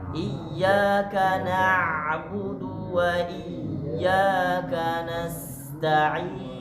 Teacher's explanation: Jadi bacanya na, bukan no.